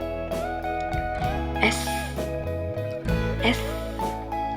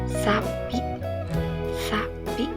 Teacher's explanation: ujung lidah dekat dengan gusi atas dan udara mengalir secara desis